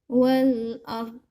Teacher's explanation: Nah ini wal ard harus terdengar juga huruf do-nya di akhir. Do itu keluar dari sisi lidah ketemu dengan geraham atas.